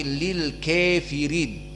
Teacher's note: Tidak dibaca lil kafirin, tetapi lil kafirin. Maka kalimat kafirin dibaca oleh Abu Amr dengan al-imalah al-kubra